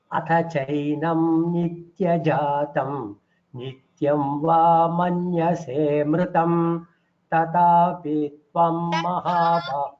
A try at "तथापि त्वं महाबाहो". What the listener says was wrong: the mahaprana, if it is clearer it would be better.